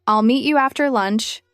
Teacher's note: Notice how meat and lunch get the main stress.